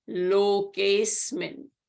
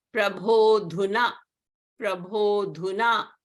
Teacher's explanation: So A is elided and you will say Lokesmin. So you don't hear the A sound.